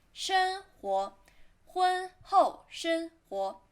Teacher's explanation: 生活 flat tone second tone